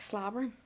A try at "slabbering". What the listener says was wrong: With an A. No O, then A.